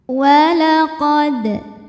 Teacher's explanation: Huruf dal sukun dihukumi qalqalah sughra karena ada huruf qalqalah yaitu dal yang sukunnya sukun asli dan berada di tengah-tengah bacaan. Maka huruf dal ini kita pantulkan dengan pantulan yang kecil.